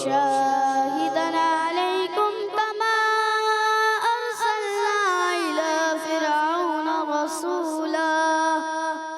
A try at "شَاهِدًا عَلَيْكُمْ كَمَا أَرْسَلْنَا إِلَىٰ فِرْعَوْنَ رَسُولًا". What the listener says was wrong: تین غلطیاں کی ہیں. شاہدن اور پھر شاہدن، ایک تو شین کے الف کو زیادہ کھینچا، الف مدہ سے زیادہ، تو خرابی ہوئی.